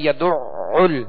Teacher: اب اس کو دوہرا پڑھیں گے، یہاں عین مشدد ہے